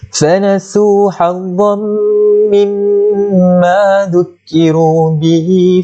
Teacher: Masukkan za itu ke dalam huruf mim beserta dengung dua harakat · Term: idgham bi gunnah